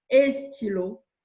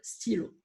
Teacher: le fameux E qu'on ajoute automatiquement devant une suite de consonnes